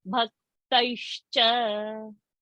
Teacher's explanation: it is not half sa, it is half sh.